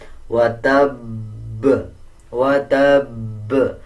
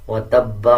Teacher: زبر کو سائلنٹ کر دیں گے اور با کے اوپر جو شد ہے اس کو مضبوطی کے ساتھ پڑھا جائے گا، جیسے وتب وتب، اور قلقلہ کیا جائے گا۔